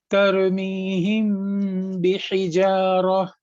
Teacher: میم کو سیدھے سیدھے پڑھنے کے بجائے میم کی آواز کو 2 سیکنڈ کے لیے ناک میں رکھا اور پھر آگے کنٹینیو کر دیا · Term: اقلاب شفوی